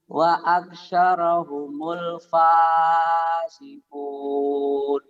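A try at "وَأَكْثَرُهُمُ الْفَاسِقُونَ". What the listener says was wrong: Wa aktsaru bukan roy ya. Wa aktsaruhumul fasiqun. Wa sanya ujung lidah ya.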